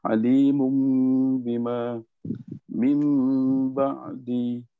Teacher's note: Jadi dalam contoh tu kita terus boleh sebut nun mati bertemu dengan ba, tanwin bertemu dengan ba, hukumnya iqlab. Cara bacaannya kita tukarkan nun menjadi huruf mim dengung 2 harakat.